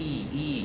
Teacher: it's a very closed vowel the space is very little e e you're closing the space to a minimum amount e · e you're closing the space to a minimum amount e so it's a long vowel it's a front vowel it's a closed vowel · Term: long front vowel